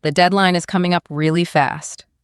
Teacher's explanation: Put a little stress on the word fast.